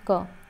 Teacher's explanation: जैसे हम क बोल रहे हैं तो कम हवा वायु निकल रही है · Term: अल्प्राण